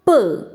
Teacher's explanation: in the production of pull the lips are brought together blocking the airstream the air pressure is built up and when the lips are separated there is an explosive explosive sound